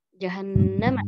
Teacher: Oh, nunnya ditahan dua ketukan. Dua harakat. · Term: gunnah musyaddadah